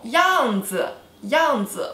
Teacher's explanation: 样子, fourth tone, no tone